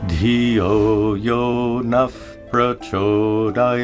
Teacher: When a visarga is followed by a pa or pa, it's pronounced as an F sound.